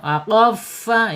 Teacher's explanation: makhrajnya asyafatain yaitu ujung gigi seri atas menyentuh perut bibir bagian bawah · fa-nya al-hams harus dialirkan. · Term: huruf fa